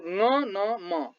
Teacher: नाके ओडारबाट सास बाहिर निस्की उच्चारित हुने वर्णलाई नासिक्य व्यञ्जन वर्ण भनिन्छ